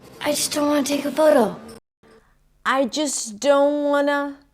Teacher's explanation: The T is also dropped between the don't and the want, right? The T after an N, when it's unstressed, in this case in a function word, is often dropped.